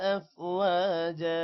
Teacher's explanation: افواجا واو کے بعد الف ہے لمبا کریں گے